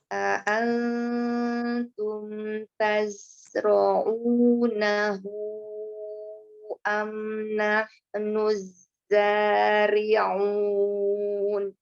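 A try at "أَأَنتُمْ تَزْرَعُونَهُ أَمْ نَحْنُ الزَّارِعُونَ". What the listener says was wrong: Ya, di huruf ain ya, baik lagi. Aun. Iya, ain ya.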